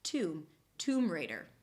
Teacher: it's a set phrase so the stress falls on the first word